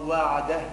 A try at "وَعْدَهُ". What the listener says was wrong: ولا مش وعده. وعده. الهاء بينها ضعيفة.